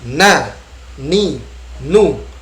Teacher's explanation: Disebut dua makhraj, artinya setengahnya lidah, setengahnya khayshum. · nun dibaca terbuka bibirnya, tetapi lidah kita menempel ke gusi · huruf nun, dia ada unsur hidungnya, ada dengungan, ya, ada gunnahnya, dengungan